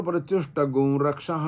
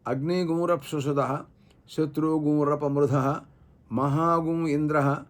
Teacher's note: యజువం అధ్యాయేపి యదా భవేత్ తథా గకార సంయుక్తో నశాంతి శాశ్వస రూపరః అనేటటువంటి వ్యాస శిక్షా శ్లోకాన్ని బట్టి అది గకారంతో కూడుకొని ఉచ్చరింపబడుతుందోయ్ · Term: గకారంతో కూడినటువంటి అనుస్వారము